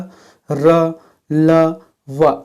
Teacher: जो जीभ, तालु और होंठ को परस्पर सटने से उच्चारित होते हैं किंतु कभी पूर्ण स्पर्श नहीं होता। जैसे कि य, र, ल, व, ये जो स्पर्श तो होता है लेकिन पूर्ण रूप से स्पर्श नहीं होता है। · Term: अंतःस्थ व्यंजन